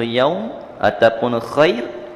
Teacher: Bila dia tidak berhenti, dia berada di tengah-tengah ayat, contoh yaum ataupun khair, maka dia baca dengan satu harkat. Kita panggil harful lin.